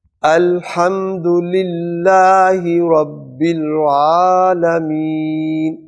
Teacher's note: جب آپ رب العالمین پڑھیں تو کوشش کریں کہ عین ادا ہو، نہ کہ رب العالمین نہ بن جائے، الف نہ بن جائے، وہ یعنی حمزہ کی آواز نہ بنے بلکہ عین اپنے حلق سے مخرج سے آئے